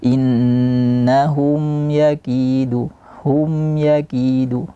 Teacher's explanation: maka dikasih gunah sedikit saja naqisah yang kurang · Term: zhar syafawi